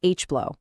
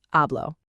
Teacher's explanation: In Spanish, the H is always, always silent. So it's not H-blow, it's just hablo.